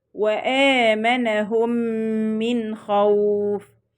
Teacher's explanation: هنا عندي الميم الأولى جاءت ساكنة والميم الثانية جاءت متحركة، هنضغم الميم الأولى اللي هي الميم الساكنة في الميم المتحركة إدغاما كاملا مع الإتيان بغنة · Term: الإدغام الشفوي